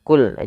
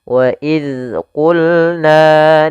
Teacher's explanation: Pada lafal qulna ini qaf, jangan dibaca wa il qulna. Qulna jangan huruf kaf tapi di huruf qaf ditebalkan